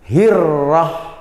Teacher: Ro-nya dibaca tafkhim atau tebal.